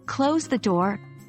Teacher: your voice should fall on the word door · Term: falling intonation